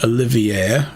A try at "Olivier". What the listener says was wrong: Still pronouncing that R. Olivier. Not Olivier.